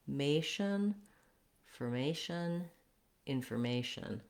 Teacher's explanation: in information, we stress on the may syllable